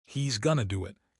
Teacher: he's gonna do it sounds like three fast beats.